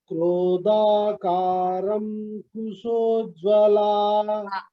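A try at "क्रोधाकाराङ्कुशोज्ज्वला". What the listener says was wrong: Here, Ra is a Dirgha. So, Krodhakarang Kushojjvala.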